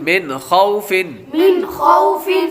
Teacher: نون ساکن کے بعد حروف حلقی میں سے کوئی حرف آ رہا ہے تو اس لیے ہم غنہ نہیں کریں گے